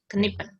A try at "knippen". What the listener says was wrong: Ya, knippen. Jangan di N-nya jangan terlalu keras ya. Knippen.